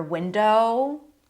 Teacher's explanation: Rising intonation meaning there is something else that's coming up. Sounds like a comma, right? Window. It's not a full stop.